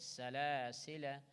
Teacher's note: ألف is silent. We will not stretch it.